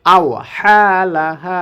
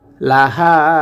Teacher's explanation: হা কণ্ঠনালীর মাঝখান থেকে উচ্চারণ করতে হবে, লাহা, আর এই হাটি কণ্ঠনালীর শুরু থেকে উচ্চারণ হবে